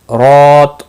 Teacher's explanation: رو کے اوپر کھڑی زبر ہے، ایک الف کے برابر کھینچ کر پڑھیں گے